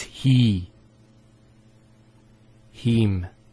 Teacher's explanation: the ha has a kasra followed by the yah. So here there's the elongation of the e sound.